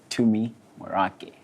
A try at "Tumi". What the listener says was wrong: Tumi. There's no H in my name.